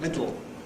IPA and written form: ˈmɪdɫ (middle)